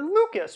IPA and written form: lukəs (Lucas)